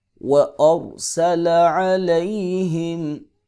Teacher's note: را ساکن ہے اور اس سے پہلے زبر ہے، لہٰذا را کو پر کر کے پڑھیں گے